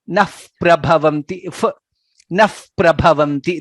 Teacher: If the Visarga is followed by pa, let's say for example here, nami naha prabhavanti. If Visarga is followed by pa, it becomes naf prabhavanti.